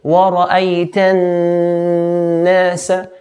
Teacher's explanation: we have a noon with a shadda. So hold the noon, then let go. ورأيت الناس, And automatically, when we pronounce the noon or meme, we'll have a sound coming from the nose.